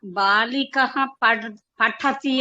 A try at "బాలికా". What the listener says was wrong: బాలిక అనకూడదండి, అది బాలిక అంటే స్త్రీలింగం. సో దానికి బాలిక అని దీర్ఘం పెట్టాలి. బాలిక అంటే ఒక స్త్రీలింగం, ఒక అమ్మాయి అని అర్థం.